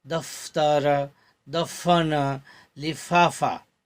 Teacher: इसके उच्चारण में वायु दांतों से घर्षण करती हुई बाहर निकलती है। · फ दो होठ से बोले जाते हैं, जबकि नुक्ता लगाते हैं तो वो दंत्योष्ठ हो जाता है। दंत्य और औष्ठ्य मतलब दांत और होठ से बोला जाता है। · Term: दंत्योष्ठ फ